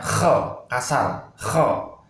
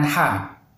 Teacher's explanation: Kha ini dibaca dengan seperti orang buang riak ya. Kha, kasar. Kha. Beda dengan ha.